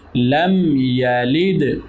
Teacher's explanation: لم یلد میم ساکن ہے اور یا ہے تو یہاں پر اظہار شفوی. لم یلد دال پر جزم ہے تو دال حروف کلکلا میں سے ہے اس لیے اس پر کلکلا بھی کریں گے